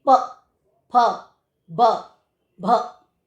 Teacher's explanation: तो दोनों लिप्स की आपस में टकराते हैं। प, दोनों लिप्स आपस में टकराए, उसके बाद साउंड हुई प, फ, ब, भ। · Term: प्रयत्न